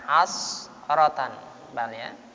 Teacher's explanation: Hasaratan, hasnya dibaca tafkhim, tebalkan. Hasaratan, harokat fathah menghadapi sin mati, sinnya baca agak tebal.